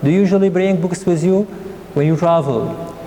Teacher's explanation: And here the intonation is rising